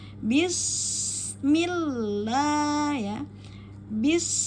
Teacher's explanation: Sin berada pada ujung lidah dengan gigi bawah